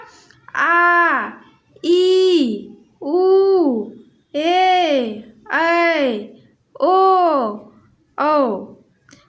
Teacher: जिन स्वरों के उच्चारण में ह्रस्व स्वर से लगभग 2 गुना समय लगता है उन्हें हम दीर्घ स्वर कहते हैं। दीर्घ स्वर 7 होते हैं।